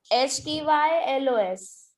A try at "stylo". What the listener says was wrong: LOS because pens है and there are two pens. This is the stilo, not stylos. The stilo.